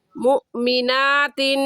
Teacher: हमज़ा साकिन आ गया और हमज़ा साकिन पर हमेशा झटका देते हैं, और तिन के तनवीन के बाद हरूफ हल्की में से कोई लफ्ज़ नहीं है, इस वजह से इस तनवीन पर हम गुन्ना करेंगे।